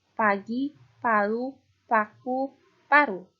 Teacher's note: Selanjutnya ada fonem P. Pada suku kata terbuka dibunyikan P, letup. Dibunyikannya secara letup atau lepas.